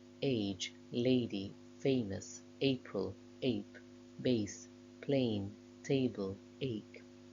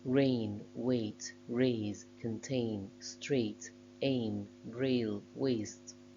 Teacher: The diphthong A starts at the same position as the vowel sound e and glides towards a closer vowel I, which is why it's a closing diphthong. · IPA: eɪ